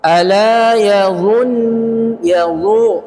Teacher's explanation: Dha harokat dhamma monyong, dhu ketemu nun bertasydid, dia nggak boleh monyong terus, balik lagi karena nun sifatnya istifal, dha sifatnya itbaq.